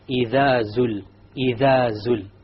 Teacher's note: The dhal, my tongue is outside. إِذَا. And then when I get to zul, the tongue goes inside.